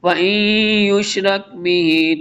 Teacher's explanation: نون ساکن کے بعد حروف یرملون میں سے یا ہے، ادغام یرملون ہوگا